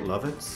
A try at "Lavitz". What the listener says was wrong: Lavitz. With an A. It's an A sound.